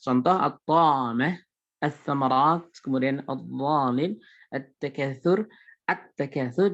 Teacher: Jadi alif lamnya tidak terbaca. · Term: alif lam yang diidgham